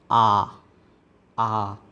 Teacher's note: इसके आधार पर सवर्त स्वर, मुख का सबसे कम मुख खुलना, जैसे ई, उ। इसी तरह विवर्त के अंदर मुख में सबसे सर्वाधिक मुख खुलता है